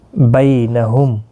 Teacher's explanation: میم ساکن کے بعد واو اظہار شفوی ہوگا۔ بینہم، بی یا لین ہے، تھوڑا نرمی کے ساتھ آدھے الف کی مقدار کے برابر کھینچ کر پڑھیں گے